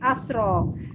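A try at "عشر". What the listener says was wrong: Asyar bukan asro Bu. Asyar. Sya-nya jangan ditebalkan Bu. Asyar.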